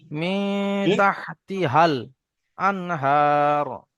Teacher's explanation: প্রথমটা হবে বড় হা, অর্থাৎ হা গলা থেকে উচ্চারণ হবে, তারপরের গুলো হালকা করে।